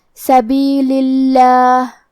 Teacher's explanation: ہم لفظ الجلالہ مطلب کلمت اللہ کے لام کو پتلی آواز میں پڑھیں گے